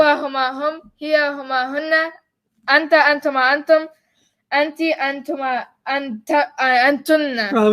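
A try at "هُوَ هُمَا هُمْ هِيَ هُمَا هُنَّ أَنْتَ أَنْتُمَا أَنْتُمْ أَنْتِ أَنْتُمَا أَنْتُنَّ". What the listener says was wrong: You said antunna twice.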